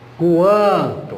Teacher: Nós estamos transferindo um som parte oral e parte nasal. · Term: ditongo nasal